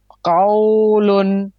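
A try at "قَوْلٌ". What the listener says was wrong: এখানে কাউ হবে না কও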